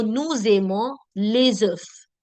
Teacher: the z sound of the s connecting. So nous aimons les œufs, connecting the sound with z. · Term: liaison